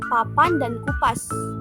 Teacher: bunyi hambat bilabial tak bersuara